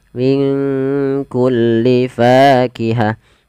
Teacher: Nun mati ketemu kaf. Di sini kita namakan dengan bacaan ikhfa. Maka cara membacanya samarkan nunnya kepada huruf kaf.